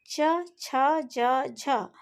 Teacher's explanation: हमारी जीभ जो है ऊपर उठकर तालू को स्पर्श करती है · च, छ, ज, झ का उच्चारण करते समय जिह्वा ऊपर उठकर तालु का स्पर्श करती है तथा कंठ छिद्र अवरुद्ध हो जाता है। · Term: स्पर्श संघर्षी व्यंजन